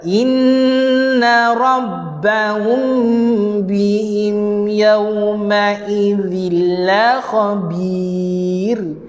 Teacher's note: Sama dengan iklab. Ikhfa syafawi sama dengan iklab, dengung dia rapat bibir, tapi bersentuhan secara ringan sahaja.